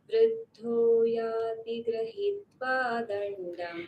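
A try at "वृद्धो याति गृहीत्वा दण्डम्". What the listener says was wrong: Grahitva, ikar is long, so not grahitva, grahitva.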